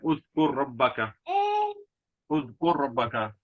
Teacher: پہلے کلمے کے آخر میں را آیا اور دوسرے کلمے کے شروع میں بھی را آیا، تو دونوں کو ادغام کر دیا